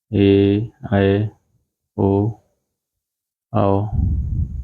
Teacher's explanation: हवा केवल मुंह से निकलती है नाक का प्रयोग नहीं होता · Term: निर अनुनासिक स्वर